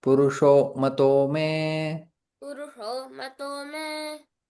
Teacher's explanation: विसर्ग का ओ में परिवर्तन है